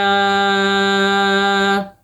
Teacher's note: زال کے اوپر کھڑی زبر ہے، 2 حرکت کھینچ کے پڑھیں گے